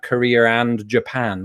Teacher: if we're talking about Korea and Japan we might put an R there but when it's on its own we we wouldn't do that